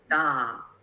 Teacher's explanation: the first tone, which is a high tone